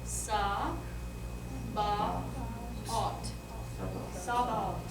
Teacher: TH is always, always, always just a normal T